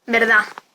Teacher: Apócope de la D final